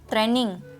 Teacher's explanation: see i didn't pronounce it a just now i did not use the diphthong